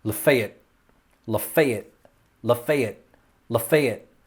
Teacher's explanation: there's no real major emphasis on that last syllable lafayette lafayette lafayette lafayette that's my best alabama accent sorry i